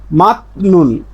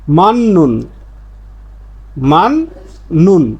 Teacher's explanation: ত ধ্বনির পরে নিউন পাইলে এ ত ধ্বনির উচ্চারণটা নিউন হয়ে যায় বা দন্ত্যান্ন হয়ে যায়। এই জন্য এর উচ্চারণটা হবে মাননুন, মান নুন।